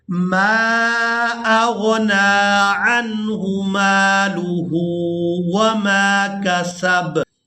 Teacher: میم کو الف مدہ کی وجہ سے اور مد کی وجہ سے کھینچ کر ادا کریں گے